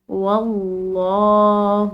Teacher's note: لفظ اللہ کی لام موٹی پڑھیں گے کیونکہ پیچھے والے حرف یعنی کہ واو کی زبر ہے